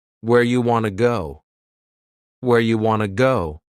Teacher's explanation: You becomes ya and want to becomes wanna. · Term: reduction